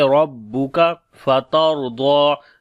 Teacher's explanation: اوپر جزم اور اس سے پہلے زبر ہے اس وجہ سے، ضاد کو موٹا پڑھیں گے حروف استعلاء میں سے اور لمبا بھی کریں